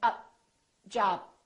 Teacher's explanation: Don't release the puff of air. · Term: final stop